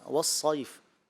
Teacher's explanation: یہ صاد ہے، اس میں زیادہ پر کرنے کی صلاحیت ہوتی ہے صفت استعلاء اور اطباق کی وجہ سے، تو یہ اور پختگی بھی ہونی چاہیے، تو اس کو مزید واضح کر دیں۔